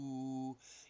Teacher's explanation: Ooh, it's way in the back. If you can feel it when you go ooh, your tongue is way up in the back, and that's where the sound is being made.